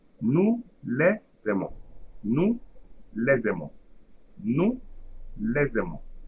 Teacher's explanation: So here we have the silent S. So we are going to create an abstract Z at the beginning of the second word. Okay, here, and the second word also, first syllable is AI. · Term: liaison